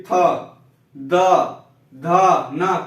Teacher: था दा धा ना, कोई भी बोलिए, जीवा दांत में ही टच होती